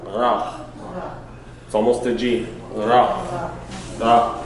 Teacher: the R is actually almost a guttural. It comes from where? It's not, the roll is not to the front, the roll is from the back.